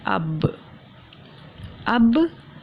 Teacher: ہمارے اوپر نیچے کے دونوں ہونٹ مل گئے ہو گیا اب. اس کا مطلب ہونٹوں کو آپس میں ملانے سے، تر حصے سے آپس میں ملانے سے ادا ہوتا ہے اب.